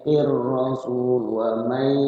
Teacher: Nunnya enggak dibaca, langsung dimasukkan ke ya. Makanya di ya-nya itu ada huruf tasydid. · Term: idgham bigunna